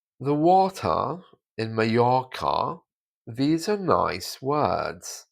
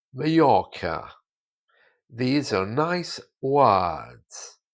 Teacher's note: So all of the R's are replaced with A's. Colloquially, in the south of England, the vowels are a little bit different, but the R's are still silent.